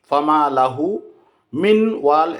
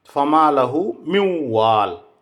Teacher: নুন সাকিনের পরে ওয়াও থাকলে ঈদগামে বিল গুন্না করতে হবে। যেমন ফামা লাহু মিউ ওয়াল, ফামা লাহু, মিম নুনজের মিন, তারপরে ওয়াও আসছে।